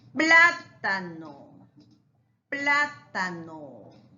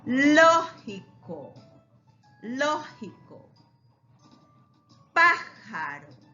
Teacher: la sílaba tónica está en la antepenúltima. Última, penúltima, antepenúltima. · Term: esdrújulas